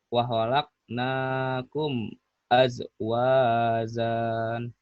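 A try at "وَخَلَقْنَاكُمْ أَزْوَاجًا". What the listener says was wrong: maka panjangnya mana coba lagi ayo udah bener hurufnya tuh panjang pendeknya belum pas wa khalaqnakum azwajan kemudian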